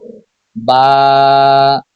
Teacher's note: দুই ঠোঁটের ভেজা জায়গা হইতে উচ্চারিত হয় বা